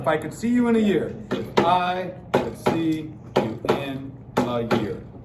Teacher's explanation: 4, tetrameter, clearly iambic.